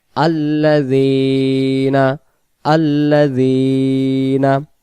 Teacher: জেরে বাম পাশে ইয়া সাকিন এক আলিফ টানতে হয় · জালের জেরটাকে আমরা এক আলিফ টানবো